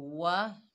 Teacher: वाव को होंठों की नातमाम गुलाई से अदा करेंगे। ठीक है, वाव को होंठों को गोल करेंगे।